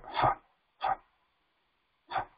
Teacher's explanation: Now Visarga is a hissing sound, like a ha, ha, ha.